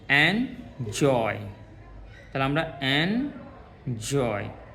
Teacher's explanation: এই জয়টা বলার সময় আমাদের একটু স্ট্রেস দিতে হচ্ছে, মানে চাপ দিতে হচ্ছে